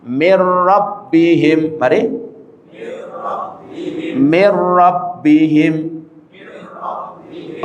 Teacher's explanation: Nunnya kita masukkan ke ro. Rnya seakan-akan tasdid. Nunnya dianggap tidak ada saat membaca. · Rnya seakan-akan tasdid. Nunnya dianggap tidak ada saat membaca. Rnya jangan ditahan. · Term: idgham bighhairi ghunah